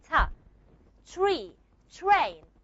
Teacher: It's like there's a small puff of air coming out of my mouth when I say t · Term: aspiration